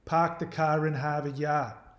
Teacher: they didn't pronounce their R's